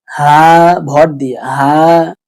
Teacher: এই হাটা হলকের বাহির থেকে উচ্চারণ হয়, হা, ভর দিয়ে হা। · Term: ছোট হা